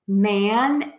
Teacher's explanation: The difference here is man has that very wide open ah.